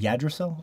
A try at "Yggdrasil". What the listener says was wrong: You kept missing G's. There was never a G in that word when you said it, so I kept hearing Yggdrasil, and